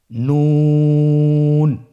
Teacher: জিহ্বার আগা তার বরাবর উপরে তালুর সঙ্গে লাগিয়ে উচ্চারিত হয়।